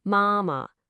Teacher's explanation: using a high flat first tone